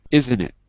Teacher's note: Look, isn't it? We dropped the T.